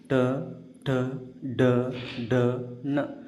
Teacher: ನಾಲಿಗೆಯ ಮಡಿಚಿ ಮೇಲ್ಭಾಗದಲ್ಲಿ ಹುಟ್ಟುವ ಅಕ್ಷರಗಳಿಗೆ ಮುರ್ದಾನ್ಯ ಅಕ್ಷರಗಳು ಅಂತ ಕರೀತೀವಿ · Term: ಮೂರ್ಧನ್ಯ ಅಕ್ಷರಗಳು